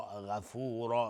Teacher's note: غین از حروف استعلاء غلیظ تلفظ میشه و را هم اینجا حکمش استعلاء چون تنوین نصب روشه